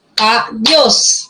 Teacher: adiós es una palabra de 2 sílabas. Adiós. Dios lleva la mayor fuerza de voz, termina en S, se tilda, está bien.